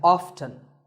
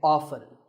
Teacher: this as often now strictly speaking often is not wrong but the more common pronunciation is with the T silent so I recommend that you always say often one word